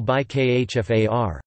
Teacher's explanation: the preposition takes the vowel, I, and the initial consonant may be weakened